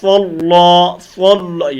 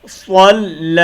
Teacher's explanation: صاد کو موٹا کریں گے، لام کو موٹا نہیں کریں گے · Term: صاد موٹا، لام بریک